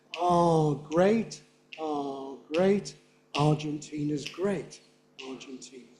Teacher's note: if we give no rhythmic beat to the middle stress, it will seem that the primary stress on the word Argentina has moved. This is what people call stress shift.